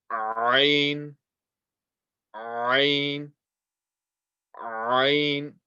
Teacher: This sound comes from the middle of the throat and has the same makhraj as ha.